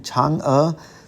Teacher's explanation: this bonus character, second tone Chang, as in Chang'e, the goddess of the moon in Chinese mythology